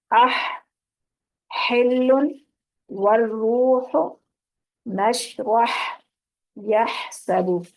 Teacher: عین اور ہا کو ادا کرتے ہوئے ہوا نکلتی ہے، گلے میں سے ہوا نکلتی ہے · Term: وسط حلق